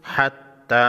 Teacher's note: کڑی زبر کو ایک الف کے مقدار کھینچ کر پڑھیں گی، یعنی 1 سیکنڈ۔